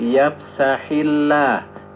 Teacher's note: Ketika lafaz Allah setelah kasrah maka dia bunyinya la. bukan lo ya.